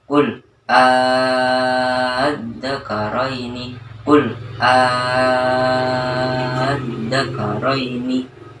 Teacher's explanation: maka mad farqi dibaca 5-6 ketukan atau 3 alif